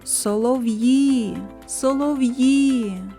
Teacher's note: наголос падає на звук І